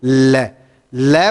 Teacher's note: जब आप लय का उच्चारण करते हैं तो लय का उच्चारण करने में आप देखेंगे कि आपकी जीभ के दोनों साइडों से या बगल से हवा निकलती हुई प्रतीत होती है। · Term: पार्श्विक वर्ण